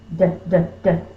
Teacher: My lips are open, my lips aren't doing anything, but my tongue is tapping. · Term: D sound